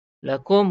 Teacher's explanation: Jelas dan terang kita sebut mim mati tak dengung. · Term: izhar syafawi